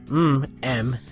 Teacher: you're blocking airflow by closing your lips